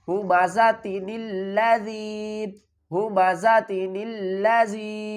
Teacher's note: آگے نون کے نیچے زیر لگا کر لام سے ملائیں گے